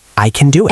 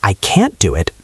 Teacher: in fast speech can is often weak and quiet while can't is stronger